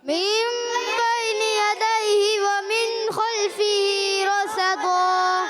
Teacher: را کو ہی موٹا کریں گے، صاد کو ہی موٹا کریں گے، اور رصدن سے رصدا، دو زبر کی تنوین کو الف سے بدل دیں گے، رصدن سے رصدا، اس کو کہیں وقف بالابدال.